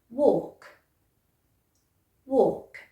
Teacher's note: And don't try to put the L in there, just walk.